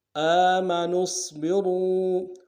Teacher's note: آم حمزہ کے اوپر کھڑا زبر ایک اعتدال میں کھینچیں گے، نون کو آگے صاد کے ساتھ ملانا ہے، صاد کو موٹا ادا کریں گے ، را کو آگے واو کے ساتھ ملانا ہے، واو مدہ،